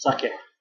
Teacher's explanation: it's not an E sound at the end, it's an eh.